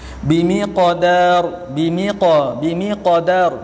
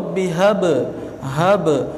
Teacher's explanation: Kerana bunyi pantulan qalqalah dibaca bersambung dengan huruf berikutnya, maka ia dibaca tidak terlalu kuat.